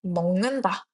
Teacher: 따라서 아까 기억은 이응으로 바뀐다고 했죠. 그래서 먹는다의 발음은 먹는다 기억이 이응으로 바뀐 형태로 나타나게 됩니다 · 기역이 이응으로 바뀐 형태로 나타나게 됩니다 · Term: 비음화